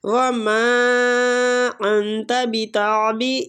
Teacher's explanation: وما میم کو کھینچیں گے، مد جائز منفصل ہو رہی ہے